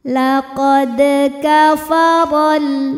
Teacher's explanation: Huruf ra dibunyikan secara tafkhim karena ra berharokat di atas yaitu harokat fathah. Maka ra dibunyikan dengan tebal, pangkal lidah terangkat.